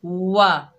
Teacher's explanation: वाव को अदा करते वक्त होंठों को मुकम्मल गोल करेंगे